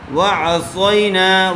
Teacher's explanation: وعصینا میں صاد آیا ہوا ہے، صاد کو پر کر کے پڑھیں گے